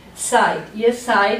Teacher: Remember the pronunciation EI, a diphthong. So we pronounce the second part of the diphthong as we would in English, I.